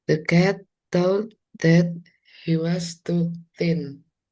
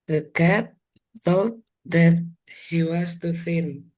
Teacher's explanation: Beda jauh kalau ujung lidahnya keluar.